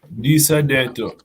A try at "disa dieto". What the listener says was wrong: Disa dieto. We said dieto. We take the I. Yeah, we take the I.